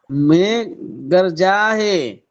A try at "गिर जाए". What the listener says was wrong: গার যায় না, গির যায়, গির যায়।